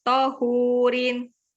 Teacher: Tonya pendek, hu-nya yang panjang